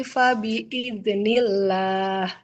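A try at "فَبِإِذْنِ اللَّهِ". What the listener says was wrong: Huruf dalnya lebih mengalir. Fabi iznillah.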